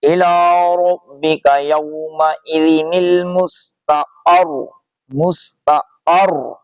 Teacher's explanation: اس طرح پڑھیں گے الی ربک یومئذ المستقر، مستقر، مستقر نہیں، مستقر، قاف کو سختی سے را سے ملائیں گے، پیش کو چھوڑ دیں گے